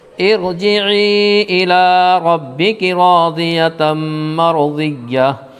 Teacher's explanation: گول تا حالت وقف میں ہائے ساکنہ بن جاتی ہے